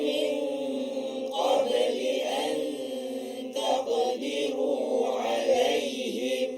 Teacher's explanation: Ta di belakang gigi kacip ataupun dekat gusi pengikat gigi tu